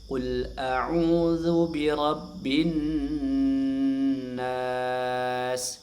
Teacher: Nas dibaca panjang ee empat harakat. Berdasarkan riwayat yang kami terima bahwasanya ini dibaca panjang empat harakat. · nun tasydidnya dibaca gunnah agak lama. Ya, dua harakat gunnah.